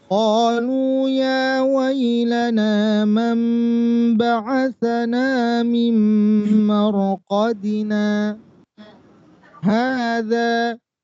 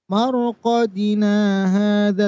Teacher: Berhenti sejenak tanpa bernafas, kemudian dengan niat melanjutkan lagi bacaannya. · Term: Sakta